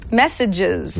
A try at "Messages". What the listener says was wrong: You're adding an N where there is none. Messages. No, not messenger. Messages.